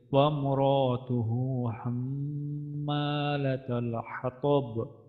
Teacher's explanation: এখানে হায়ের মধ্যে উল্টা পেশ আছে, একালিফ টান আছে এখানে। এখানে আমাদের মিমের উপর তাজদিদ আছে, এখানে আমাদের ওয়াজিব গুণনা।